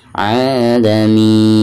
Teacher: Ketika diwakafkan maka di sini dihukumi mad arid li sukun ya. Dibacanya bisa dipanjangkan 2 harokat, bisa 4 harokat dan bisa 6 harokat.